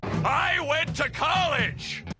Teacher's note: he adopts some grit when he gets really passionate